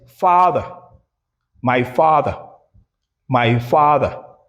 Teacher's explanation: because it's it's appearing in an unstressed position, then you realize it as schwa sound. The weakened a sound.